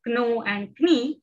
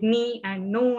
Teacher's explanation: later generations stopped saying k in that consonant cluster, k, na, and they just said ni and no and knowledge and so on.